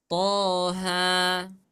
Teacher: Dalam semua riwayat baca Al-Quran, toha tetap dibaca 2 harokat. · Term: Mat tabi'i harfi